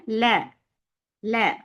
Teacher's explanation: மாத்துவோம் அப்படி மாத்தக்கூடாது ல சொல்லுங்க ல ல சத்தம் கீழ் நோக்கிதான் போணும் லேம் ஒரு லைட் லெட்டர் ல தான் சொல்லணும் எந்த காரணத்தை கொண்டும் லா அப்படின்னு சொல்லக்கூடாது